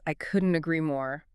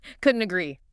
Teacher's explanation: I noticed the T at the end of couldn't links into the A of agree. Yes. It becomes couldn't agree.